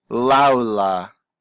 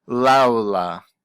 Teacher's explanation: Notice how the L just flows into the next word